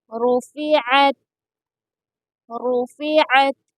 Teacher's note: را کو پر پڑھیں گے یعنی موٹا پڑھیں گے اور عین کو درمیانے حلق سے ادا کریں گے